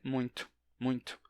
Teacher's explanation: Muitos nordestinos dizem muito, muito, com um chiado leve.